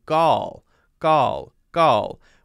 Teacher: she's got her tongue in the l position but there it sounds like there's no r right so instead of er it's an er sound she's she's